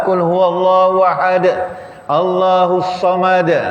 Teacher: Qalqalah kubra. Mesti ada letupan dia tu.